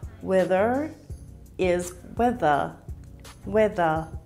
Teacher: many Australians don't pronounce the r sound at the end of words